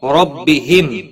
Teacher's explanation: میم ساکن کے بعد یا آیا ہے، اظہار شفوی ہوگا، غنہ نہیں کریں گے